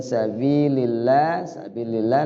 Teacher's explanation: lafzul Allah dibaca tarqik Dibaca tipis karena kalimat Allah lafaz Allah lafzul jalalah ketemu dengan huruf yang berbaris kasrah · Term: tarqiq